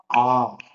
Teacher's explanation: குறில்ங்கிறது ஒரு மாத்திரை அளவு. ஆங்கிறது நெடில் 2 மாத்திரை அளவு.